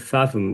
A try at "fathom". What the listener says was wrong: So yeah, fathom. Fathom. Yeah, you're putting an F in the middle. So I'm saying fathom. I'm saying fathomable. Fathom.